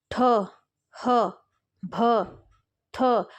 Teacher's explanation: महाप्राण क्या होता है मतलब उच्चारण में जब जब आप ना जब बोलते हो वायु ज्यादा बाहर को निकलती है